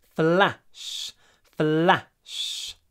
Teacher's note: Lots of f, lots of l, lots of sh, not a lot of a.